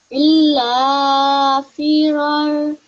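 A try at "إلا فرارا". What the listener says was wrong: Okay, well done. So what you have done, you have prolonged the illa for 2 seconds and the fira for 2 seconds. That's correct.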